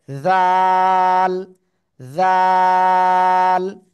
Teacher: জিহ্বার আগা উপরে দুই দাঁতের আগায় লাগিয়ে নরম করে 3 আলিফ টেনে উচ্চারণ করতে হবে, জাল, জাল। ঠিক আছে, যখন শব্দের শুরুতে আসবে এই জাল অক্ষরটা, তখন এভাবে আসবে।